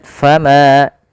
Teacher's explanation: Panjangkan huruf ma dua harakat · Panjangkan huruf ma 2 harakat, fama, tapi jangan terlalu berlebihan dalam membaca mad tabi'i. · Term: mad thai